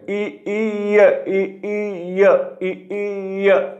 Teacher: य इ ई य म्हणजे याचा अर्थ होतोय स्थान मिळतोय म्हणजे इ च स्थान जर तालव्य आहे तर य च सुद्धा स्थान काय झालं याच्यामध्ये तालव्य वर्ण